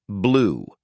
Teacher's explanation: U as in blue. Lips tightly rounded and pushed forward. Tongue is high and back. Hold it noticeably longer than you.